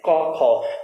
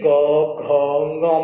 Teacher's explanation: क ख को जब बोलते हैं तो हल्के में बोल दिया जाता है, लेकिन जैसे ही ग घ ङ में जाते हैं तो पूरे कंठ में यहाँ पर कंपन पैदा होती है। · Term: सघोष